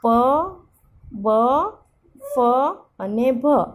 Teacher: હોઠ બંધ કરીને આપણે જે ધ્વનિ બોલીએ તેને ઓષ્ઠ્ય કહેવાય છે. · પછી આવે છે ઓષ્ઠ્ય. બંને હોઠ એકબીજાને સ્પર્શ કરી હવાને રોકે છે. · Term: ઓષ્ઠ્ય ધ્વનિઓ